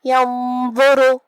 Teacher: آخر میں حرف الراء پہ پیش ہے تو راء کا حکم ہے تفخیم، ہم حرف الراء کو بھاری آواز میں پڑھیں گے.